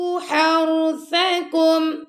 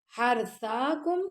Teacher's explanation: را کو نرمی سے اور سا کو بھی نرمی سے, ہا گلے کے درمیان سے. اگر آپ پڑھیں گے حرثاکم تو یہ غلط ہو جائے گا آپ کا.